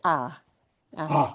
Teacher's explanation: even though it looks like ha we don't want to hear an h